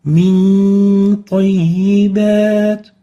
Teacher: Nun sakina followed by a ta in 2 words. We apply hiding for the nun and keep the ghunna for 2 units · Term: Ikhfaa